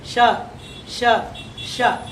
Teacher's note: ಷ ನಾಲಗೆ flat ಆಗಿ ಮೇಲಕ್ಕೆ ಹೋಗ್ಬಿಡುತ್ತೆ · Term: ಮೂರ್ಧನ್ಯ